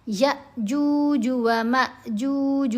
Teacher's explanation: دیکھیں اوپر جزم آ گئی نا دونوں کے، تو اب یہ دونوں حمزہ ساکن ہیں، اب ہم نے ان کو جھٹکا دے کر پڑھنا ہے، چھوٹی آواز پڑھی جائے گی، جھٹکا دیا جائے گا۔